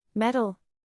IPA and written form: ˈmet.əl (Metal)